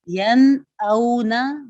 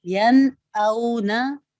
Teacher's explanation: کسی قسم کا کوئی بھی غنہ نہیں کیا جاتا بلکہ نون ساکن کو بالکل واضح کرتے ہیں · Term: اظہار